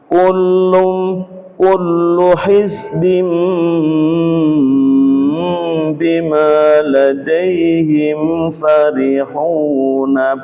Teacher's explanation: Suara kasroh tanwin diganti suara mim dengan dengung lama.